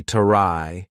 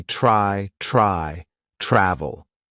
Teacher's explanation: the consonant blend TR is going to be more of the CH sound combined with R. So for example, TRY is not going to be tarai, it's going to be try, travel.